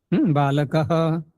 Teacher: देखो विसर्ग का उच्चारण कहाँ से होता है, कंठ से